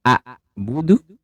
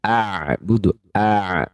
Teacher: ain dari sisi suaranya dia sedikit mengalir · Hamzah sifatnya syiddah, yaitu tertahan suaranya, sedangkan ain adalah tawassut, sedikit mengalir suaranya. Ya, tidak sepenuhnya mengalir tapi sedikit mengalir.